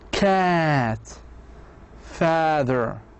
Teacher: Cat father the tongue is low.